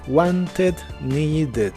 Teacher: con t y necesitar es need y termina con d y cuando le agregas Ed al final la pronuncias normal como Ed con una e suave